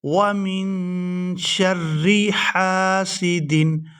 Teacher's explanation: ہا ہے یہاں پر، حلق سے اس کو اچھی طرح سے ادا کریں گے اور اس کو کھینچ کر ادا کریں گے کیونکہ اس کے ساتھ الف مدہ ہے۔